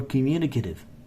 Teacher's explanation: the T between two vowels are changing to D